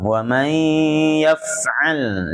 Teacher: lam sukunnya ditahan di makhrajnya agar tidak mantul